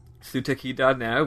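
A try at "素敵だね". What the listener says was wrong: It'd be Steki, actually. Well, yeah, when you sing it, you pronounce all the syllables, like, fully. Unless it's you're singing really quickly, but... Yeah, it would be Steki.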